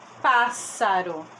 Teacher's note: acento agudo porque tem esse som aberto